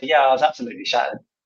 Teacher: you specialize on your pronunciation so when I said absolutely shattered the stress on the absolutely and then the stress on shattered breaking down every single syllable makes it sound so much more dramatic